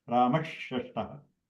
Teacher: Ramaha Shashtaha, that Sha is the Shanmukha Sha. Then Rama, the Visarga of Rama will turn into the Shanmukha Sha. You will have a double Sha.